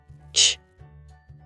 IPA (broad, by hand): tʃ